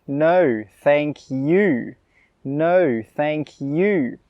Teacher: note here how I really emphasise the word 'you'.